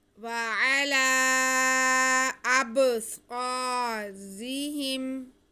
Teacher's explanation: وَعَلَىٰ أَبْصَارِهِمْ، أَبْصَارِهِمْ، را کے نیچے زیر ہے اس لیے را باریک پڑھا جائے گا۔ وَعَلَىٰ أَبْصَارِهِمْ، آگے ہا کے نیچے زیر اور میم ساکن ہے، اس کو ملا کے بس پڑھ دیں گے، کھینچنا کسی کو نہیں ہے، صرف صاد کو کھینچیں گے کیونکہ اس کے ساتھ الف مدہ ہے۔